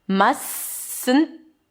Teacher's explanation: I dropped the T of the must.